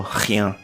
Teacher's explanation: O R, ele possui um som que vem da garganta, como eu disse, bem conhecido, e ele é forte e arrastado